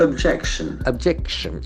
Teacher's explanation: Can see the accent falls to the second syllable.